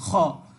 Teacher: খ, খ, এই যে এখানে যে জিমের মতোই দেখতে, হায়ের মতোই দেখতে, কিন্তু উপরে একটা কি আছে, নুক্তা আছে, সেটা কিন্তু খ। একেবারে কণ্ঠনালীর একটু আগে থেকে উচ্চারিত হবে